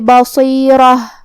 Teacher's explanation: ہم کلمت بصیرہ پہ رکیں گے تو تاء مدورہ پہ ہا سے رکیں گے، مطلب ہم آخری میں ہا ظاہر کریں گے